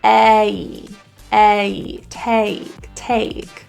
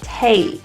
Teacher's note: In the word take, it is a diphthong vowel, meaning there are two vowels. A, take. If you can hear that A sound, there's a little E position in there that we don't want to lose.